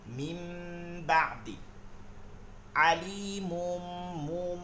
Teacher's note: নুন সাকিন বা তানবিনের পরে বা পাইলে ওই নুন সাকিন তানবিনকে মিম সাকিন পড়বো গুন্না সহিত